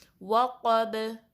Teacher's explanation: یعنی جب قاف کو با سے ملائیں گے تو با پہ جب وقف کریں گے، سٹاپ کریں گے، تو آپ کی آواز پلٹ کر واپس آئے گی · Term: کلکلا